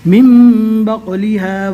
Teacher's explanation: نون ساکن کے بعد اقلاب کا ایک حرف با آ گیا، لہٰذا نون کو میم سے بدل کر پڑھتے ہیں۔ نون کی جگہ پر میم پڑھنا ہے۔